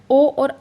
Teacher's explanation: ओ और औ का उच्चारण स्थान होता है कंठ प्लस ओष्ठ